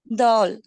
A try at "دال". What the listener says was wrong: தால் இல்ல தேல். இப்போ இந்த 5 எழுத்துக்கள் கல்கலா அப்படின்னா என்னன்னா ஜர்க், ஒரு வைப்ரேஷன் இருக்கணும்.